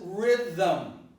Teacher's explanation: So the language has invented an artifice. The artifice is to introduce a vowel which is not there. And the vowel happens to be the neutral vowel, which we also call a schwa, right? And it's pronounced with more facility.